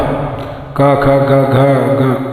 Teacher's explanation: अको विसर्जनिया नाम कंठ, का खा गा घा ग, ये जीव के मूल से कंठ से निकलते हैं